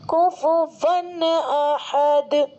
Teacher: تنوین کی آواز کو ظاہر کر کے بلا غنہ کے جلد پڑھیں گے، اس کو اظہار کہتے ہیں.